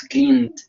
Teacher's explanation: Pero cuando no, simplemente la E no la pronuncias y la D suena como explosiva